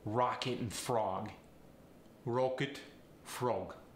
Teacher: short o gets the rounded o